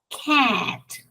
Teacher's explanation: pero no es eh No es largo no es largo es abierto